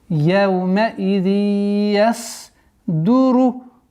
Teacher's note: Одна из самых распространенных ошибок, когда яздуру, язз. После идгама, после назализации появляется у нас сад, переходит в звук з, что является грубейшей ошибкой.